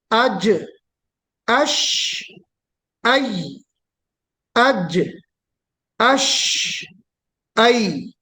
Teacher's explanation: اب وسط لسان مع وسط الحنک الاعلی مطلب وسط لسان اور اس کے مقابل کا تعلق. وسط لسان سینٹر آف دا ٹنگ کہاں ٹچ ہوتی ہے؟ اپر پیلیٹ میں ڈائریکٹلی